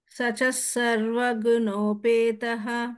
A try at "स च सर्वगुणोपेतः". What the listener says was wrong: There is no the stress for sa. Sacha sarva gunopetah.